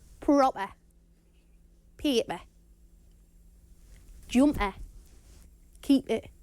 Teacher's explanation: glottalized p which is often present in a Jordi accent now this glottalized P will happen when a p is between two vowel sounds